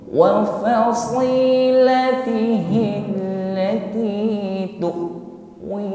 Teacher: Huruf hamzah sukun, maka di sini nampak sifatnya yaitu syiddah. Jadi ketika sukun syiddah, tertahan aliran suara. Tidak ada suara lagi yang mengalir, bukan tu'a sebagaimana huruf ain.